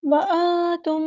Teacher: نون ساکن کے بعد تا آیا تو اخفا ہوگا، نون کی آواز کو ہم چھپائیں گے ، وانتم، میم ساکن کی آواز پہ یہاں پر اظہار ہوگا،